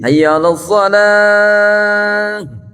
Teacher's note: Huruf H tak marbutoh adanya di pangkal tenggorokan.